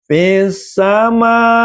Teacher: Yang tadinya panjangnya 2 ketuk berubah menjadi 6 ketuk. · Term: mad wajib muttasil